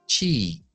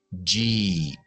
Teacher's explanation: la CH es igual, pero activamos la voz. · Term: cha con voz